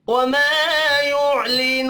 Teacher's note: वमा अलिफ मद्दा है, एक अलिफ के बराबर खींच कर पढ़ेंगे। युअलिनू, वाव मद्दा है, इसको भी एक अलिफ के बराबर खींच कर पढ़ना है।